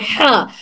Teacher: हलक के बिल्कुल दरमियानी हिस्से से